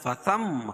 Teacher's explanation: فثم میم مشدد ہے غنہ ہوگا